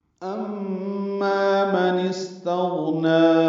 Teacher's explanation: امی مشدد پہ غنہ ہے اور ما الف مدہ ہے، غنے میں آواز ناک کے بانس سے ملے جائیں گے اور ما میں 2 حرکات لمبا کریں گے۔